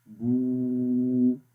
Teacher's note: تھوڑا سا ہم اس کو الف کے برابر لمبا کریں گے. دیکھیں آواز یہاں سے آئے گی ووکل کارڈ سے، اور یہاں سے جیسے نکلے گی تو جو پھر دہن، تو اس جگہ سے بیسیکلی آواز نکلتی ہے. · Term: واو مدہ